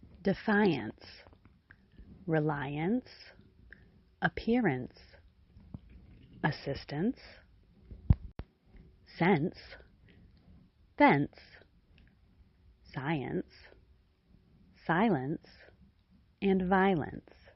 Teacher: The vowel of the final syllable is reduced greatly to the point where it sounds simply like ence